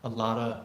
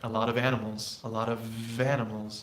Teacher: dropping the f in the word of is something we do all the time